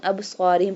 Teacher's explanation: We do qalqalah on ba and we bold pronounce the sad